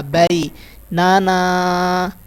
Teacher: اس کے بعد الف مدہ نون کے ساتھ. تو بئی لمبا نہیں ہوگا، نون لمبا نہیں ہوگا، نون کے آگے الف مدہ ہے جس کی وجہ سے یہ لمبا ہوگا